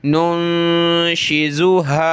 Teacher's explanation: ناک میں آواز پیدا کریں گے